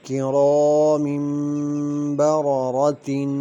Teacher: کرا کی را موٹی ہوگی، الف مدہ ہے، کھینچ کر پڑھیں گے